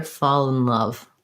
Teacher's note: So kind of think about fall. And because we link the L, we don't really need to do a dark L here. We can do it more like fall in love.